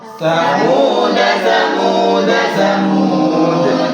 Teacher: Samuda jika diwasol dibaca samuda, jika diwaqaf dibaca samud.